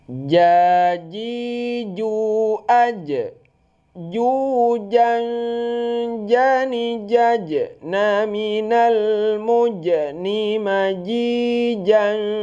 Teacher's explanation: Dia itu huruf jahar. Kalau jahar itu tidak keluar angin.